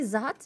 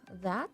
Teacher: Oh, in the word that you substituted substituted the voiced th with a z sound